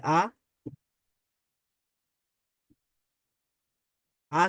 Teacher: আলিফ মুখের খালি জায়গা থেকে হ্যাঁ মুখের খালি জায়গা থেকে